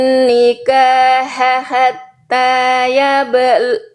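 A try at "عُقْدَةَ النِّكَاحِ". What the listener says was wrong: Nikahiha bukan nikahaha ya. Salah harokatnya tadi Bunda. Silakan diulang lagi.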